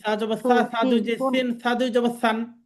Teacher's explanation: জিহ্বার আগা সামনের উপরে দুই দাঁতের আগা থেকে নরম ভাবে উচ্চারণ করতে হবে, আদায় হবে।